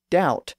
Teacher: from dubit to doubt we hear how that b sound in the middle was lost in French